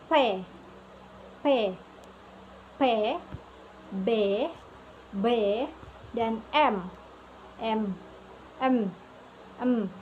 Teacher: Kedua bibir digunakan sebagai artikulator. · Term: labial